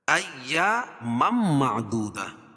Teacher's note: ایامم معدودہ، اور یہاں ادغام مع الغنہ ہو جائے گا، کیوں کہ تنوین کے بعد مم جو ہے میم کے اوپر دو زبر کی تنوین ہے، یہ تنوین کے بعد ادغام مع الغنہ کے 4 حرفوں میں سے میم آ جائے گی تو وہاں غنہ ہوگا